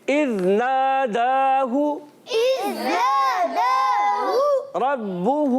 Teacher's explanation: را پر زبر آنے کی وجہ سے را کو پر پڑھیں گے